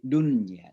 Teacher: Karena ini satu kata dunia, artinya dunia, dunya. Maka suara nun itu harus jelas, ya. Jangan diidgham. Ya, jangan dimasukkan suaranya ke dalam ya. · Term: izhar